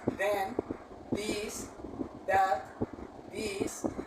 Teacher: the interdental sound is produced when we join three parts of the of the body which are the tip of the tongue with the upper and the lower teeth